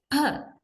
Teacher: the phoneme per is realized as aspirated per